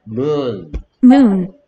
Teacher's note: 그래서 O가 내는 소리는 우가 되지. 오, 오는 우 되는 거야.